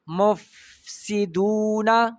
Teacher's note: بره غاښونه ثنایه علیا په لاندې شونډه باندې کېدی، په نرمۍ باندې، او پوکي پکې وباسئ، همس اواز او رخوت نیم الف نه کم اواز جاری کړئ. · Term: فا